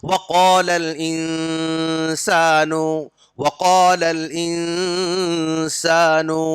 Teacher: نون کی آواز کو چھپا کے پڑھنا پڑتا، اس کو بولتے اخفا۔ اخفا مطلب چھپانا، آواز کو چھپا کر پڑھنا۔